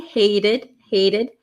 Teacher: Notice that T becomes a flap T.